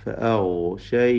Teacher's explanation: ഗൈന് മുസ്തഅലി മുഫഖം രിഖ് ലാം ഉള്ള അക്ഷരമാണ്. തഫ്ഹീമോടുകൂടി തടിപ്പിച്ച്